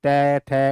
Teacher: गंत जो जीभ है वो दांतों से टकराए गी त थ ऊपर वाले दांतों से टकरा रही है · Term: त वर्ग, दंत्य